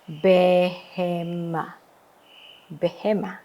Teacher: kita harus membaca sewa ini dengan sewa yang moving, ya. E pendek, ya.